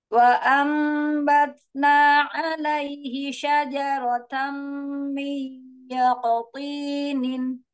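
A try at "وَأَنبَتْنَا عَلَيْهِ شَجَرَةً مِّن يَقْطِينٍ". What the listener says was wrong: Iya, Masya Allah, Ahsanti.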